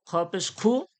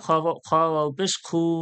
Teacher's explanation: খ পেশ খু কোনো টান হলো না, খ ওয়াও পেশ খু একালিপ টান হয়ে গেল।